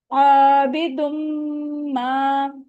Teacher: मीम पे क्योंकि शद्दा है तो हम क्या करेंगे, 2 काउंट जितना गुन्ना करेंगे, यानी आवाज को यहाँ ठहराएंगे 2 काउंट जितना